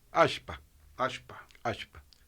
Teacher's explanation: Lo que ocurre es que la doble L pierde su rasgo de lateralización y pasa a ser alpa.